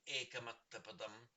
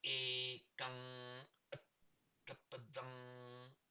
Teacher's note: a vowel followed by anuswara, is always treated as a long syllable in Pali